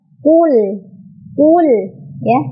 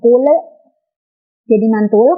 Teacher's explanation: Di ayat pertama dari surat Al-Ikhlas ini, di bacaan qul, maka lamnya itu lam sukun dan tidak boleh memantul